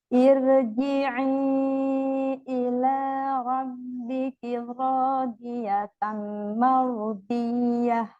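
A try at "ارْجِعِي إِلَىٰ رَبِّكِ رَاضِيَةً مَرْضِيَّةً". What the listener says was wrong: Botnya kurang tebal di kata rodi. Terus tanwin ketemu mim di sini ada apa ini? Idgham bi gunnah ya? kedengeran tadi. Tebelin. Ini harus tebal. Kenapa harus tebal? Bukan, ini bukan huruf fathah. Kalau huruf fathah bacanya ar. Iya, betul. Tapi jadi jangan ir.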